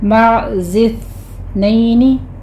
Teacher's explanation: آگے ومن المعز اثنین، مع میں آئین وسط حلق میں جا کے سٹاپ ہوگا، زف پہلے زے کی آواز آگے سا کی آواز سٹاپ ہے، وہاں پہ سیٹی نہیں ہے، معز اثنین، ٹھیک ہے، صرف ہمس ہوگا، سیٹی کی آواز نہیں آئے گی